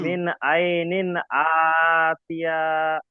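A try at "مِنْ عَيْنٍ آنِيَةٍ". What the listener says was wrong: আতিয়া বলবেন না, আনিয়াতিন। হামজা যাবার, হামজা খাড়া যাবার আ, নুন জের নি। আ নি। ইয়া যাবার ইয়া। আ নিয়া। তা দুজের তিন। আ নিয়া তিন।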